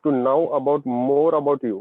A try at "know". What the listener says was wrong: No. K is silent.